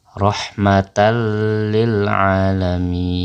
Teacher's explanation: tanwin tersebut kita lebur ke dalam huruf lam lam nya menjadi bertasydid atau double